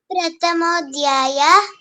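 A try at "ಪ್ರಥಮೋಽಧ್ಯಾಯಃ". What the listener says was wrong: ಪ್ರಥಮೋಧ್ಯಾಯ ಅಲ್ಲ, ತಾ ಮಹಾಪ್ರಾಣ. ಪ್ರಥಮೋಧ್ಯಾಯ. ಪ್ರಥಾನು ದೊಡ್ಡದು.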